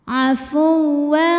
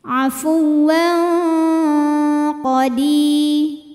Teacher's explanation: Suaranya banyak yang masuk hidung, aliran suara dari mulut sedikit. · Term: ikhfa